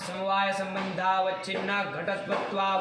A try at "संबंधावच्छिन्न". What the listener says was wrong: अवच्छिन्ना बोल रहे हो,